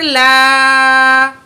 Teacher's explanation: ان اللہ، عین زبر آ، لام کھڑا زبر لا، لام کے اوپر کھڑا زبر ہے، 1 پوائنٹ کھینچ کے پڑھیں گے